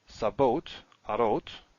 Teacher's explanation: you have compensatory lengthening because you can't double the resh. Same here, we have sabot, arot, so we still have this long a here, rather than short a.